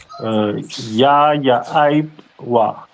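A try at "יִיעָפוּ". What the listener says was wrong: Ya'aipwa. Exactly.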